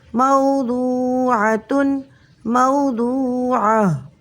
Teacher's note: حالت وقف میں گولتا ہا ساکن سے بدل جائے گی، وقف بنے گا وقف الابدال۔